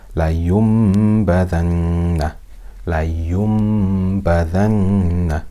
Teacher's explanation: we've changed that noon sukoon here into a meem, and we've read it with ghunnah for two harakat